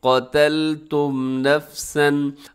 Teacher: इस लफ्ज़ के आखिर में मीम है, मीम साकिन के बाद फिर आगे नफसन के शुरू में नून आ रहा है, तो यहाँ पर हम मीम साकिन का इजहार करेंगे। इजहार शफवी इसको कहा जाता है, यानी तेज़ी से पढ़ देंगे।